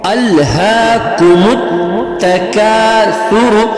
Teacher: سا جو ہے نرم حروف میں سے ہے، تو اس کو زبان کی نوک سے ہم ادا کرنے کی کوشش کریں گے